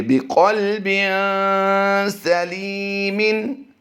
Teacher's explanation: بازر بھی کو لمبا نہیں کریں گے، قاف لام زبر کل کو بھی لمبا نہیں کر رہے، نہ ہم نے یہاں پر قلقلہ کرنا ہے، صرف قاف کو ہم نے پر پڑھنا ہے۔ جیسے ہی ہم با دو زیر بن کی ادائیگی کرتے ہوئے آگے پڑھیں گے تو اس میں ہم نے غنہ کر دینا ہے، اور یہ غنہ زمانی ہوتا ہے۔